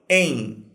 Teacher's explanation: E não é nem com o som de M, nem com o som de N. O que a gente faz é criar um ditongo nasal. A gente fala o EI anasalado, em.